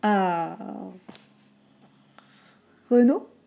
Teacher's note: En baissant un peu l'intonation.